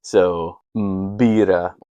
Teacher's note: They have a beta, but normally it's pronounced as a V. So to make a true B sound, that plosive B, they'll do the M followed by the pi. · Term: plosive B sound